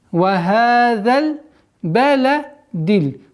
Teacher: Все звуки здесь мягкие звуки, и поэтому нужно обращать внимание на мягкость, четкость произношений.